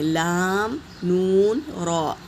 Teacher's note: اوپر کے دانتوں کے مسوڑوں میں لگائیں گے زبان کا کنارہ تو یہ حروف ادا ہوتے ہیں